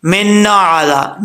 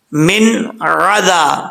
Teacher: من عذاب، نا کی جو آواز آ رہی ہے نا، یہ نہیں آنی چاہیے. نون کے اوپر آواز جم جائے، ٹھیک ہے، اور لوٹنی نہیں چاہیے، لوٹے گی تو کلکلا ہو جائے گا.